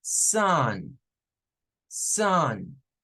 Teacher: después de la s comienza a escucharse como una media a que se termina convirtiendo en una u cuando llega a la n